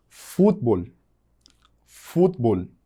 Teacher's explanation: Eu tenho fut lá em cima, no início da palavra, que é a sílaba mais forte